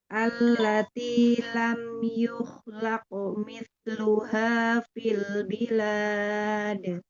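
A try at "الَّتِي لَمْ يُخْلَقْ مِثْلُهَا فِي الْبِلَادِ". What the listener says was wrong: Ya, dilatih lagi ya Bun untuk huruf K-nya, dialirkan.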